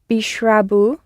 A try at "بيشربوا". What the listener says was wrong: Yes.